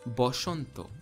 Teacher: bengali similarly has schwa in it but interestingly it's not a it's o · Bengali similarly has Shwa in it, but interestingly, it's not A, it's O. Therefore, the Hindi word Vasant, which in Sanskrit would be Vasanta, in Bengali becomes Boshanto.